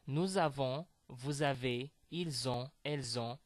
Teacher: I'm making this connection between nous and avons, between vous and avez, between il with an s at the end and on. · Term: liaison